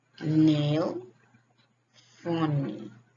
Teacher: The sounds is voice alveolar nasal.